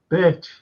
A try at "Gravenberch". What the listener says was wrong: No, I've heard that it's pronounced Gravenberch. It's in the Dutch tongue, it's Gravenberch. You don't say the ch in Dutch. It's Berch. Gravenberch. Yeah, sounds more like the word Berch. B-E-R-K. Gravenberch than Birch in the Dutch tongue.